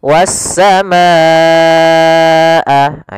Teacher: bersambung hamzahnya dalam satu kata, maka panjangnya untuk mad wajib muttasil yaitu empat harakat dalam riwayat Imam Syatibi atau lima harakat dalam Imam Syatibi juga dalam pendapat lainnya.